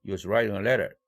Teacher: 대강세는 여전히 writing 할 때 write, letter 할 때 le 두 개뿐입니다